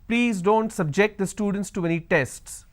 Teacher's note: here my stress has moved to the second syllable